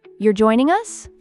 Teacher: Native speakers often phrase questions as statements with a rising tone.